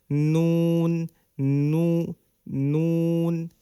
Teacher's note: জিহবার আগা তার বরাবর উপরে তালুর সঙ্গে লাগিয়ে নুন উচ্চারিত হয়